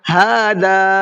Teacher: یقولون قاف کو منہ بھر کے پڑھنا ہے. ہاذا ہا کو بھی کھینچنا ہے اور ذال کو بھی کھینچنا ہے